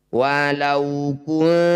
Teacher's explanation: Nun sukun bertemu tak disebut bacaan ikhfa akrob. Bunyi nun dengungkan 2 harokat, ketika dengung lisan kita sudah di tak.